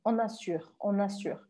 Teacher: O R é o R do francês, bem arranhado.